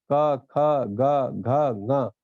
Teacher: क वर्ग जो है, इनके सभी अक्षरों का उच्चारण कंठ से होता है